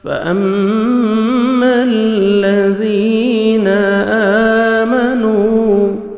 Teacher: میم مشدد غنہ کریں گے، نوز میں ساؤنڈ لے کے جائیں گے